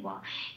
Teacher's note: বয়ের উচ্চারণ ও প্লাস অ, মুখটা খুলে বলতে হয় ওয়া। এখানে কি আছে, বয় আকার আছে উপরের ব্র্যাকেটে, তাই কি দিলাম, ও প্লাস আ, তাহলে উচ্চারণটা কি হবে, ওয়া।